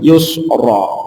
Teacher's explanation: Kalau rok yang fathah jadi tebal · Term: rok tafkhim